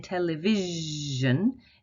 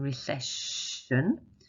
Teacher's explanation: to a sh sound s is a little more tricky because s i can make both the voice sound and the unvoiced sound so it can make a sh sound in recession and in